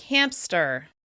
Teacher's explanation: Many people insert the /p/ sound into the word so that it actually sounds like "hampster." The insertion of the sound also happens in the word "warmth.". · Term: epenthesis